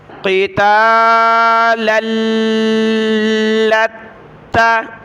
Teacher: لام اور تا کو سخت کیا تشدید کی وجہ سے